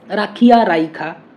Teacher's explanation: তাহলে যেখানে উচ্চারিত হওয়ার কথা তার অব্যবহিত পূর্বে উচ্চারিত হচ্ছে, এখানে স্বরধ্বনির স্থানান্তর ঘটছে। এই যে ই বা উ যে স্থানে উচ্চারিত হওয়ার কথা তার ঠিক অব্যবহিত পূর্বে উচ্চারিত হচ্ছে, এই উচ্চারণের রীতিকে বলা হচ্ছে অপিনিহিতি। ঠিক আছে, রাখিয়া রাইখা, ঠিক আছে, এইভাবে হয় বিষয়টা।